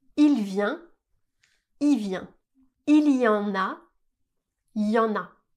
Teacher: Et on va s'intéresser maintenant au pronom qui est lui aussi très souvent contracté à l'oral. Devant une consonne, on va rarement prononcer le son le du mot il. On va simplement prononcer i, ce qui va donner il vient, il vient, il y en a, il y en a. · Devant une consonne, on va rarement prononcer le son L du mot il, on va simplement prononcer I